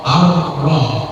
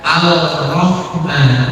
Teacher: tulisannya alif, lam, ra, tapi lamnya tidak dibaca, langsung dibacanya langsung ke huruf ra, ar-ra, bukan al-rahman, tetapi ar-rahmanir rahim, lamnya tidak dibaca, dilebur. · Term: idgham syamsiyah